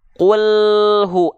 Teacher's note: Antara l dengan hu, suara yang mengalir itu l. Bukan vokal e, tapi konsonan l.